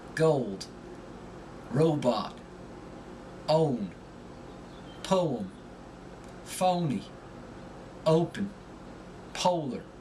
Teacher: when they pronounce the long O, they add a slight sound at the beginning of the vowel